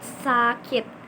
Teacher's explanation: ada udara yang keluar lewat sela-sela lidah dan gigi depan